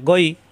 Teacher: গ কণ্ঠনালীর শেষ অংশ থেকে উচ্চারণ